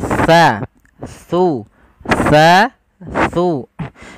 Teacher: Makhrajnya ujung lidah kita menempel dengan gigi seri atas kita